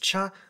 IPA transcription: tʃ